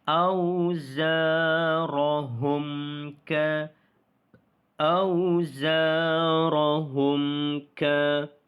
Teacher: Kerana hukum mim mati bertemu huruf kaf. maka kita izharkan bacaan, iaitu jelaskan bacaan kita. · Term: izhar syafawi